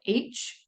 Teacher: the breath stream is kind of constricted further back in your throat at your glotus so that is a glottal sound and the